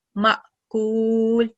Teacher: Alif carries a sukoon, so we need to produce a slight jerking sound